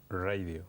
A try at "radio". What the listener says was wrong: No hagas la R americana. Radio.